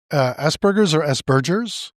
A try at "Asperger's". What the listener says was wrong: Well, it's named after Hans Asperger, who was Viennese, and it's a hard G. It's a G rather than J. And she said, Asperger.